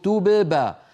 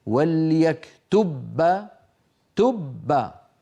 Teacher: طب أليس من الأسهل أن أذهب إلى مخرج الباء مرة واحدة فأقول وليكتب تب، فأطبق شفتي على باء ساكنة من غير قلقلة، وأجافيهما وأباعدهما عن باء متحركة